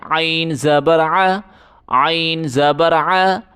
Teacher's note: گلے سے زور لگا کے عین پڑھیں